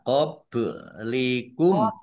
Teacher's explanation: Ba sukun, bacaan kolkolah, ya, dibaca memantul